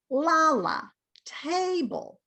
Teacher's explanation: it's stressed on the first syllable, which means the first syllable is higher. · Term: stressed syllable